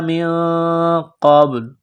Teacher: نون ساکن کے بعد قاف ہے، حروف اخفا ہے تو نون ساکن پر غنہ کریں گے، قاف کو موٹا کرنا ہے. من قبل، قاف کو با کے ساتھ ملانا ہے، با ساکن ہے تو با پر قلقلہ کریں گے.